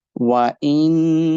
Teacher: make the ha sound longer because of waw madda. After dhamma, waw is coming.